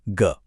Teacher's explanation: ग बोलते हुए एक वाइब्रेशन महसूस हुई ना? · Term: घोष